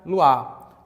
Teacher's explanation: Mas, na pronúncia rápida, você pode pronunciar luar. Então, passaria de um dissílabo para um monossílabo e de um hiato para um ditongo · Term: sinérese